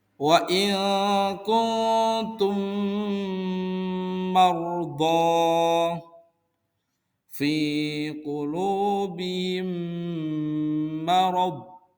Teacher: Apabila ada mim sukun bertemu dengan mim, maka cara membacanya yaitu dengan berdengung dan ditahan 2 harokat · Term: idgham mimi